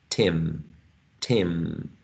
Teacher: nasal sounds are very influencing right they generally influence on the neighboring sound so in this case this e becomes nasalized · this vowel sound is nasalized. It's sharing this characteristic of the following sound, which is a nasal sound. So in this case, we're talking about partial, contiguous, regressive assimilation.